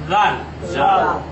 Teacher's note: জিহ্বার আগা এবং সামনের দাঁতের আগা একত্রিত করে অত্যন্ত হালকাভাবে নরমভাবে নরম করে উচ্চারণ করতে হবে